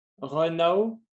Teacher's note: I don't pronounce the N with run. I pronounce it for now. · We do not pronounce 2 ne sounds. We only pronounce 1 ne sound, right? Because they are both the same sounds, one sound.